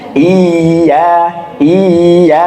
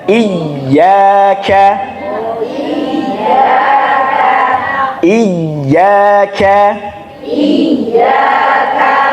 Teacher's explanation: jadi termasuk ya maka ya ketika ada tasdid niku bukan dimatkan bukan dipanjangkan tapi ditekan